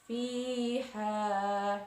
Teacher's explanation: Kemudian fiha, di sana ada 2 mad tabi'i, yaitu ya didahului harokat kasroh dan alif yang didahului harokat fathah. Fiha, dibaca 1 alif atau 2 harokat.